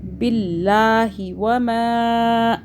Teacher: اللہ باریک ہو رہا ہے کیونکہ اللہ سے پہلے زیر آ رہا ہے. باللہ وما، آگے نون کے اوپر یہ یہاں پہ اخفا ہوگا.